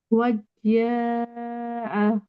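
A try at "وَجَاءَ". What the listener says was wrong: wajja nahi. Don't connect wa with jim. Waja'a.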